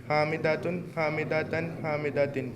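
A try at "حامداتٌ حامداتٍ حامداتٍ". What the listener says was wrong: लंबा लंबा लंबा लंबा, जल्दी। अरबी में जल्दी नहीं करते, अरबी में जब भी जल्दी करते हैं गलत प्रोनाउंसिएशन हो जाती है। हामिदातुन हामिदातिन हामिदातिन।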